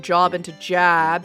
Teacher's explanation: the tensing and fronting of certain vowels, turning job into jab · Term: Northern Cities vowel shift